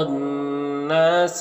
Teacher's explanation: الف لام حروف شمسی نون کے شروع میں ہے تو الف لام دونوں کو نہیں پڑھیں گے، نون مشدد غنہ ہوگا، الف مدہ ہے، ایک الف کے برابر کھینچیں گے، لام میں الف مدہ ہے، ایک الف کے برابر کھینچیں گے، یہاں پر وقف کی صورت میں مد عارض وقفی ہوگا، تو اس طرح سے پڑھیں گے۔